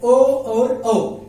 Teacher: कंठ से हमारे आवाज आती है, लेकिन साथ में जो होंठ है वो गोल शेप ले लेता है। इस वजह से ओ और औ को हम क्या कहेंगे, कंठोष्ठ कहेंगे।